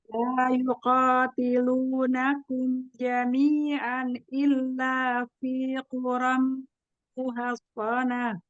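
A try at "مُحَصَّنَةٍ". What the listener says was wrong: Masih ya, muhassonah. Nah, nunnya jadi terseret muhassonah.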